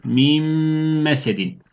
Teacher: Bu da Mim harfine dönecek iki tane mim harfi okuyoruz ve bir Elif miktar tutuyoruz